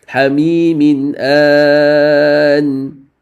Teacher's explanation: So this is a clear tanween. That means there's no ghunna.